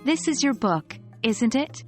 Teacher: if you use a rising intonation, you are unsure and are genuinely asking for information.